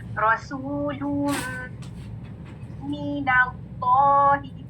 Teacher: तो अब जब आपने तनवीन की स्पेलिंग खोली तो उसमें एक हरकत है और एक नून साकिन छुपा, ठीक है। ये नून साकिन मीम में मर्ज हो रहा है, ठीक है। तो मीम मुशद्दद का गुन्ना क्लियर करना, नून जो है वो मीम लेटर में मर्ज हो गया कंप्लीटली, ठीक है।